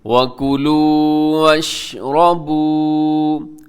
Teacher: وَكُلُوا وَاشْرَبُوا، را موٹا پڑھیے گا، اور آخر میں واو مدہ ہے، لمبا کر کے پڑھنا ہے